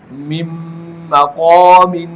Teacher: اب یہاں پر بھی نون ساکن کو میں نے میم کے ساتھ اس طرح سے داخل کیا کہ نون ساکن اور میم دونوں کی آواز اکٹھی آ رہی ہے، دونوں مشدد ادا ہو رہے ہیں، تو اسے ادغام کہتے ہیں، اور ساتھ ساتھ غنہ بھی کیا جا رہا ہے۔